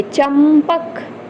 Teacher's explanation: किस वर्ग का है प वर्ग का है तो इसका उच्चारण प वर्ग का पंचमाक्षर म है तो इसका उच्चार हम म के सेंस में करेंगे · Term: अनुस्वार